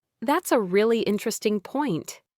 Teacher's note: with a rising intonation on interesting